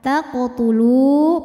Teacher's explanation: wau sukun didahului harakat damah maka lamnya panjang dua harakat taqtulu panjang namun panjangnya ini hanya saat berhenti saja kalau diwasalkan · Sebab waw ini adalah waw sukun, waw mad. Waw sukun didahului harokat dhammah, maka lamnya panjang 2 harokat. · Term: wau Mad, mad tabi'i